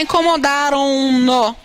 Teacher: Então, quando eu termino com som nasal e ponho o, eu poderia dizer incomodaram o. Essa nasalização, ela migra para o pronome. · Tenho que colocar incomodaram-no. Porque se eu não puser esse N, eu não nasalizo o. Então, há uma nasalização natural.